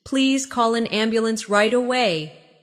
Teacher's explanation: Stress right away so the listener understands the urgency.